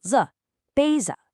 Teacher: Then our essential particle, the, and finally the noun, 杯子. That's 杯, a high, flat first tone, and a light, neutral, 子